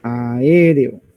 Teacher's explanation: hay una separación una ruptura se separa esa vocal de la otra vocal